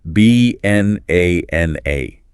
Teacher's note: The first and third syllables are reduced to schwah. They become these little throwaway uh sounds.